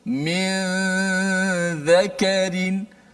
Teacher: hujung lidah kita tidak naik ke atas langit. Maknanya daripada mim terus pindah kepada zal. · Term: ikhfa hakiki